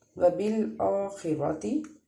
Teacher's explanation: آگے را ہے، را کو بھی پر پڑھیں گے کیونکہ را کے اوپر زبر ہے، اور اس لیے خا اور را کو ہم نے دونوں کو پر پڑھنا ہے۔ اور اس سے پیچھے جو لام تھا، لام کو ہم نے باریک پڑھنا ہے۔